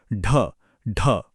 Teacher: सबसे पहले जीभ की नोक को थोड़ा पीछे की तरफ मोड़िए। फिर दूसरा स्टेप उसे मुंह के ऊपर वाले हिस्से से टकराइए। और तीसरा इसे बहुत तेजी से एक झटके के साथ आगे की तरफ लाइए। एक फ्लैप की तरह एक बार बोल कर देखिए। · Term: उत्क्षिप्त